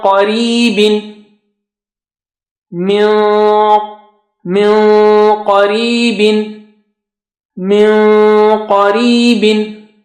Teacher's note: Now qaf is high sounding, so your nun sakina also will be high sounding because you are preparing yourself and you are going close to the makhraj of qaf, and then then holding back to give sound of ghunna.